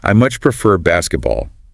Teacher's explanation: stressing much to show a strong preference